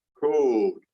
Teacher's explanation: D is a voiced consonant, so it extends, code. The same thing would happen with steam and steep. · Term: vowel lengthening